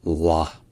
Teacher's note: il y a un L qui est long, un L qui est emphatique, puis une voyelle A qui est longue